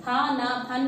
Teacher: Pha is a mahapranakshar and na is a anunasik vyanjan.